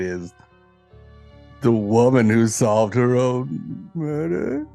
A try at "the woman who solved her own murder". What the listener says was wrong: Yeah, it sounds like you're asking a question. Like, did she?